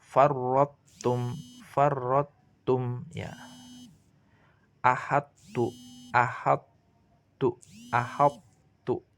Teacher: Huruf to-nya dilebur ke huruf ta. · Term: idgham mutajanisan